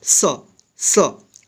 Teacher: दंत स, दांत और जीभ की मदद से उच्चारण होता है